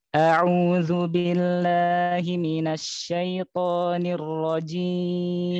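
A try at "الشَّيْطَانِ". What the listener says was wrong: Syai'u, pokoknya kurang tebal. Syai'u, jangan syai'u masih kurang.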